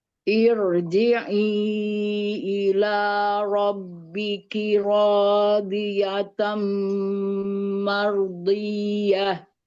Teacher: ro sukun sebelumnya didahului oleh hamzah wasol, maka ro sukunnya dibaca tebal ya. Walaupun hamzah wasolnya itu kasroh, tapi kasrohnya kan kasroh tidak asli.